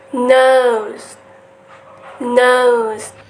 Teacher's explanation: So the tongue is touches or approaches the alo ridge and the manner of articulation is nasal. So the airflow is to the nose instead of the mouth. And the sound is voice.